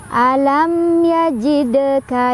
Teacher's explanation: Jadi bacanya memantul dan pantulannya kecil aja. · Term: qalqalah sughra